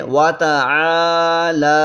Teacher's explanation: عین میں بھی الف مدہ ہے اور لام میں بھی الف مدہ ہے